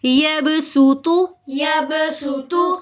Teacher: مخرج تو ایک ہے دونوں کا، لیکن ان میں فرق کیا ہے، ڈفرنس کیا ہے کہ صاد موٹا پڑھا جاتا ہے اور سین باریک پڑھا جاتا ہے